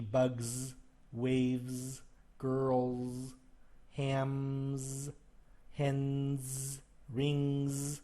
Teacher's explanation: you can hear the voice at the end, the voiced consonant, so it's a Z sound.